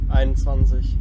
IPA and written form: ˌaɪ̯nʊntˈt͡svant͡sɪç (einundzwanzig)